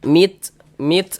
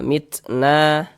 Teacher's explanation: Jadi ada nafas yang mengalir ketika kita mengucapkannya. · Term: hamas